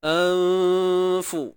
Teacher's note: Nun pada atas na, ba baris bawah bi, kemudian hamzah pangkal kerongkong bunyikan betul-betul anfu. Nun mati bertemu fa, ikhfa haqiqi. Sembunyikan sebutan nun mati. Jangan sebut nun tepat pada makhrajnya.